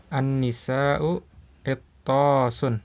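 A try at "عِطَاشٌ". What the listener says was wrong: Bukan itosun, enggak ada tasdidnya. Itosun, itosun. Iya, ya, lihat di jiaun kan enggak ada tasdidnya ya. Sama enggak ada tasdidnya. Itosun. An-nisa'u itosun.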